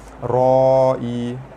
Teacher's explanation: huruf mad bertemu dengan hamzah dalam 1 patah perkataan, hukum dia mad wajib muttasil dibaca panjang 5 harakat